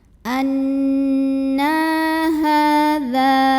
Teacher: Cara bacanya didengungkan. Bunyi N-nya tahan sampai ada getaran halus ke hidung. Na mad asli atau mad tabi'i karena ada baris fathah tegak di atas huruf nun, maka dibaca nunnya panjang 2 harokat. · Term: gunnah musyaddadah